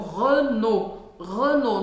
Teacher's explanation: no final a gente não fala nem o L nem o T. A gente fala como se fosse um O.